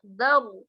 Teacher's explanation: Ini dinamakan tafkhimul ra, bacanya tafkhim, baca ra-nya tebal, caranya dengan mengangkat bibir.